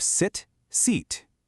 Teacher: sit is relaxed, quick, your jaw is just slightly open. Seat requires you to pull those lips back into a wide smile and really hold it.